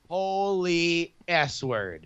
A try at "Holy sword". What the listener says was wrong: well, you said S word. It's pronounced sword. Why did I pronounce it S word when clearly I said holy sword?